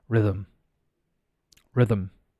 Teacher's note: The TH is pronounced. It's vocalized. It becomes rhythm.